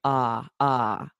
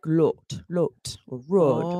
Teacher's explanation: So words like lot and rod are pronounced with an unrounded vowel in English. So it sounds like ah, ah.